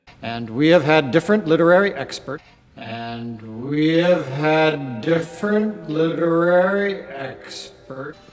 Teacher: the words have and had as part of the present perfect and past perfect are also commonly reduced to had and have.